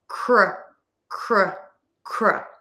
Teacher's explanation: for the K, the tip of the tongue is low, back of the tongue is pulled high up.